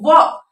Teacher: व का जो उच्चारण स्थान होगा वो हो जाएगा दंत और ओष्ठ। तो इसका जब हम नाम देंगे इसको तो इसका नाम हो जाएगा दंतोष्ठ्य।